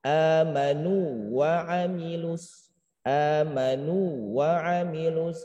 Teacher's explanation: tekankan kata nu ini panjang 2 harokat, jangan sampai menjadi idgham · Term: mad tamkin